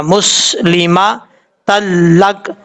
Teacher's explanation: جب یہاں پہ وقف کریں گے تو کاف ساکن ہو جائے گا